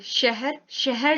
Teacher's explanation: श होता है तालव्य, यानी कि इसमें हमारी जिह्वा तालु को छूती है। श, देखिए शहर, शहर जब बोल रहे हैं तालु को छुएगी।